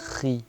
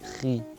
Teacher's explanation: Uno vibra más y el otro es más soplado, digamos, más fricativo.